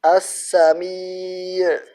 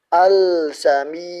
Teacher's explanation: Akan tetapi sin termasuk huruf alif lam qamariyah dan cara membacanya diidghamkan. Lamnya tidak dibaca jelas atau tidak dibaca. · cara membacanya di idghomkan lemnya tidak dibaca jelas atau tidak dibaca seperti ini as-sam'iyyat bukan izhar seperti ini al-sami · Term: alif lam asy-syamsiyah